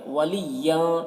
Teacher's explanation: ین کی تنوین میں اخفا ہو رہا، تنوین کی آواز کو ناک میں چھپا کر پڑھیں گے